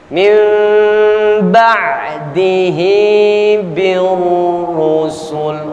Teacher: Yang terburu-buru, nun mati bertemu dengan huruf ba, iqlab. Sisakan jangka untuk kita menahan ini bacaan mim 2-3 harakat, 2-3 ketukan paling tidak.